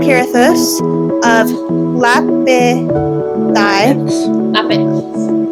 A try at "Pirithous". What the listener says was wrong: Why are you adding extra syllables?